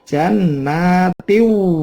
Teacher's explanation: Tin ada tanwin ketemu wawu, idgham tiu bacanya.